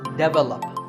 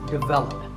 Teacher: This is pronounced wrongly by many learners of English as develop. But the first syllable is actually di, and the stress is on the second syllable